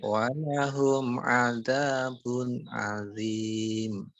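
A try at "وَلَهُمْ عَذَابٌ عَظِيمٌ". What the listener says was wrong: Ya, tadi masih keluar udara, Pak. Coba lagi bersihkan, Pak. Walahum adzabun 'adzim.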